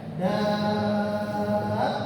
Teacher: Kemudian yang kedua kalimat dabbah di makrasi mustaqil ini cara bacanya dipanjangkan dulu 6 harokat baru ditekan ketika masuk huruf yang bertasydid